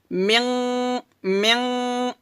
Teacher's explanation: গুণনাটা মোটা হবে কারণ নুন সাকিনের পরে ইকফার হরফ কফ আসছে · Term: ইকফা গুণনা